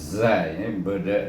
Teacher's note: Kemudian zai, ini zai, iaitu kita punya hujung lidah bertentangan dengan gigi kacip dan kita sebut zai, iaitu hamas dan berdesir bunyinya